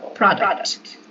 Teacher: So you make emphasis on the first syllable. The stress goes on the first syllable.